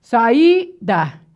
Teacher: iato pessoal é o encontro de duas vogais em sílabas separadas